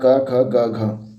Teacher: कंठ से क वर्ण उच्चारित होता है